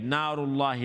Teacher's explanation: Alif madda, so the noon's going to be long.